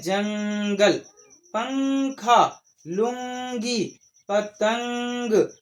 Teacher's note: تو جو ناک سے آواز آئی یہی ہے گننا